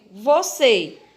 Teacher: você é uma palavra oxítona porque a sílaba dela mais forte é a última sílaba